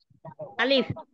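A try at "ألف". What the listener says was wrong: জি, আচ্ছা, মাশাআল্লাহ, সুন্দর হয়েছে।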